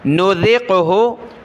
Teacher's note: ذال پر زبان نکالی، قاف کے ساتھ ملایا